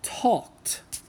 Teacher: Talk ends with an unvoiced sound, the K, and so it's a safe bet to assume that the ed will probably make a T sound.